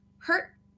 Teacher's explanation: by itself if the t's at the end we have stop t